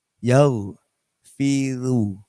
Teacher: Ro yang dhammah tapi dibaca tipis.